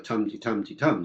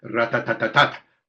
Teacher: the tum-ti-tum-ti-tum, stress-timed rhythm, is very different from the rat-tat-tat-tat syllable-timed rhythm